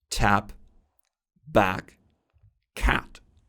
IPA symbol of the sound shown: æ